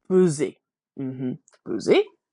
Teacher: this s between two vowels is sounding like a z